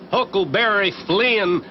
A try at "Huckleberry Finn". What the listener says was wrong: Finn! He was Huckleberry Finn, not Flynn. Ain't it the decent thing to pronounce the poor dead loafer's name right?